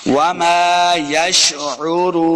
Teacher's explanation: واو مدہ ہے اس کو دو حرکات لمع کریں گے اور آخر پہ ہم نے وقف کر کے پڑھنا ہے.